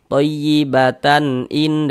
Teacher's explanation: kalau misalkan kita tidak berhenti di huruf tamarbutah ini baru dia menjadi huruf ta. Misalkan nih thayyibatan in dan seterusnya menjadi huruf ta dia.